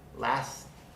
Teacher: Last. The T at the end of last is between a S, a fricative, and another consonant, so we don't pronounce the T.